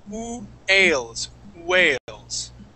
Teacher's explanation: So class, the trick to words that start with a W, okay, is to start off with an oo sound. Instead of a v sound, we start with an oo sound.